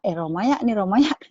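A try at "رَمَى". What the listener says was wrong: Itu panjang ya-nya. Ya-nya panjang. Romaya.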